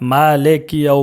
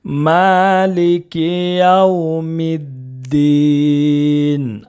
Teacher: بہت سارے حضرات مالک یو پڑھتے ہیں، لے نہیں پڑھنا ہے، اس کو لی پڑھنا ہے۔ لے پڑھیں گے تو مجہول ہو جائے گا، اور معروف پڑھنا ہے، تو معروف پڑھنے کے لیے لی پڑھنا ہے، لے نہیں۔